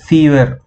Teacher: my lower lips are getting twisted inside my mouth and caught hold by the upper teeth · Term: F or V